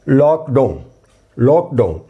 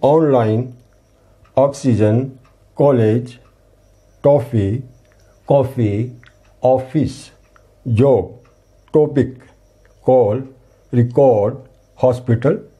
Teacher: आ और ओ बीच की ध्वनि है वो, इसके लिए हमें इसके ऊपर ये आधे चांद का चिन्ह लगाना होगा।